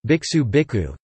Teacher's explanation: A sibilant assimilates to a preceding k as an aspirate (i.e., the sequence kṣ becomes kkh)